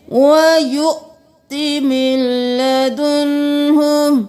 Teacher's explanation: واو کو نہیں پڑھنا، حمزہ کو جھٹکا دے کر پڑھنا ہے، من لدنہ نہیں کرنا، میم زیر لام مل، نون کو چھوڑ دینا ہے، وَيُؤْتِ مِن لَدُنْهُ۔